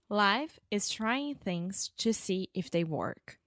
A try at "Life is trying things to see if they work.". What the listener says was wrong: Nice. I actually think this is really good in terms of pronunciation because you have this pretty difficult phrase.